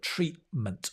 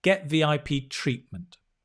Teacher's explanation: Treatment. The T in the middle is dropped. The sound disappears.